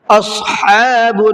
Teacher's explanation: اصحاب صاد کو مبر کے پڑھنا ہے اور حا کو حلق سے نکالنا ہے